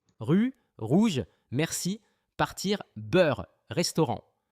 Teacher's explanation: এই শুনুন ভালো করে, গলাটা কিন্তু কাঁপবে